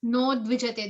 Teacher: when na and udvijate combine, the u sound vanishes. So it becomes no dvijate. The U turns into an O.